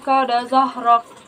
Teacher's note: Hukum tajwidnya ikfa, karena nun mati bertemu dengan huruf ikfa yaitu kaf, maka dibaca dengung dan samar-samar 2 harokat.